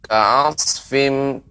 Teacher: Huruf shad ya lebih diperbanyak lagi ya aliran udaranya